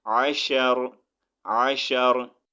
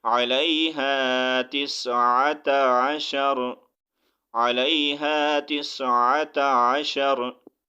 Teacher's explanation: अब यहाँ पर आयत कंप्लीट हो रही है, हम रुकेंगे तो रा को साकिन करेंगे।